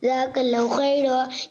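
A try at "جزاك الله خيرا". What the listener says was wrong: ओए काला हु नहीं होता, कला हु होता है ना भाई। खींचेंगे नहीं, खींचने की जगह थोड़ी है यहाँ पे।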